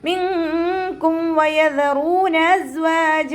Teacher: നൂൻ സാക്കിനയെ മറച്ചു വെച്ചിട്ട് മണിച്ചോതി കൊടുക്കുക. നൂനിൻ്റെ സൗണ്ടിനെ വ്യക്തമായിട്ട് അവിടെ കേൾപ്പിക്കരുത്, ഒന്ന് ഹൈഡ് ചെയ്യുക കേട്ടോ.